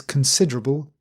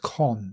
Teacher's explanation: Kun, not con, not not a round mouth, but kun, schwa